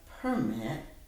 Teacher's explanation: when I said we need to get a permit, then the accent was on the first syllable